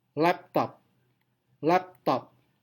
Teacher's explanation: Nah, ini yang disebut sebagai type 4 bisyllabic words. Kedua silabel mendapatkan primary stress, tidak ada secondary.